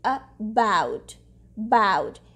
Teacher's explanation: In about, the second syllable is stressed. So the first syllable is saying the schwa sound because vowels say schwa sound in unstressed syllables, right?